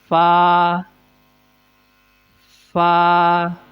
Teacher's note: اوپر کے دانتوں کے کنارے اور نیچے کے ہونٹ کی تری والے حصے سے